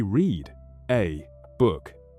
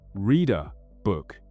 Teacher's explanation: If one word ends in a consonant and the next word begins with a vowel, they smash those two words together until they become one new word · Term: linking